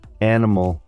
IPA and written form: ˈænɪməl (animal)